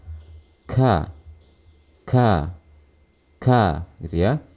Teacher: pertama sifat huruf kaff yang pertama ialah Hans Apa artinya yaitu Saat kita memaafkan huruf Kaf harus terdengar ada suara aliran nafas gitu ya harus ada terdengar suara nafas saat kita melakukan huruf Kaf · Yaitu saat kita melafalkan huruf kaf harus terdengar ada suara aliran nafas. · Suara tidak mengalir saat kita melafalkan huruf kaf karena tertutupnya makhraj dengan sempurna. Jadi suara tidak mengalir saat kita lafalkan. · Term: hams, asyiddah